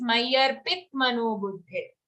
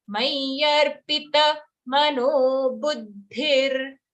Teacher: When we say Mayyarpit, we are saying a half ta. But it's Mayyarpita, a full ta.